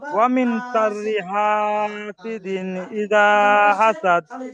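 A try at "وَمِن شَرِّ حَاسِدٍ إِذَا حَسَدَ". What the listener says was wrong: মাশাআল্লাহ, ঠিক আছে।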